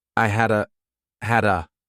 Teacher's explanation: I combine had a together as one word